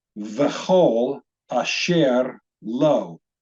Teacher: So it's got the stress on the word lo